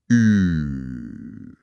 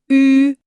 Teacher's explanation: Die Lippen bleiben rund. Aber deine Zunge im Mund formt plötzlich den Buchstaben I. Ah, Du willst eigentlich ein I sprechen. · Ah, Du willst eigentlich ein I sprechen. Deine Stimmbänder sagen I, aber deine Lippen lassen nur ein O-Loch zu. Das Ergebnis ist perfekt Ü.